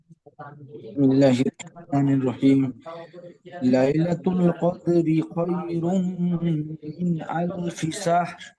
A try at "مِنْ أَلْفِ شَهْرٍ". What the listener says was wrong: মাশাআল্লাহ, শাহর ওখানে ছোট হা আছে, মিন আলফি শাহর, মিন আলফি শাহর,